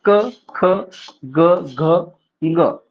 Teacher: ठीक आहे उसके आगे [खोकला] अब यह माना जाता है की इन व्यंजनो का उच्चार स्थान कोमल तालू यानी कंठ से उपर का स्थान है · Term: कंठ व्यंजन